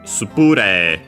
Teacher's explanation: Because spray in English would be on the rei. Yeah, no, in Japanese it's on the pu.